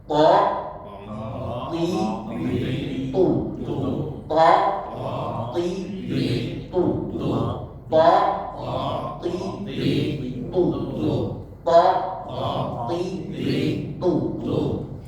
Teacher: To juga hampir sama seperti huruf do, tetapi to itu harus sedikit ditahan. Ya, ditahan kemudian dilepaskan. Nah, seperti ada pantulan, karena memang dasarnya huruf to huruf yang dipantulkan.